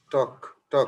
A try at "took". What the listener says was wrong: আরেকটা মানে টক না কিন্তু টক না টকও না মিষ্টিও না took.